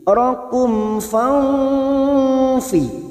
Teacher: nun sukun bertemu fa ikfa hakiki, kita samarkan bunyi nun sukun 3 harokat, dan ini juga yang disebut dengan ikfa ausat.